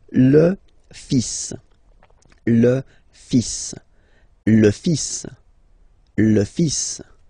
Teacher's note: even if you've got this L, well, basically you don't pronounce it, and then strangely you pronounce the final S